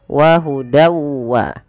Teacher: wa di sini masukkanlah bunyi tanwin pada lafal dan awalnya dan karena ia bertemu wau kita masukkan tanwinnya kepada huruf wau · Nah, di sini idgham bi gunnah juga bisa kita namakan dengan idgham naqis. Ya, idgham bi gunnah yang dia naqis, tidak sempurna diidghamkannya, masih menyisakan sedikit bunyi suara nun. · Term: Idgham bhunah